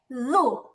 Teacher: জিহ্বার আগা উপরের তালু মানে উপরের দুই দাঁতের আগার সাথে লাগবে। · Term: জাল